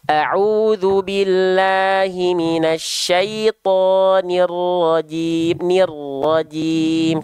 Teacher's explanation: jangan sampai Maaf saya potong Bunda huruf ro jangan sampai ro huruf ro tetap harus terdengar getarannya